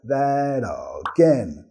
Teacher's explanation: vamos a vincular that, con la re suave